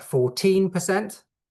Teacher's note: 14% with your stress on the second syllable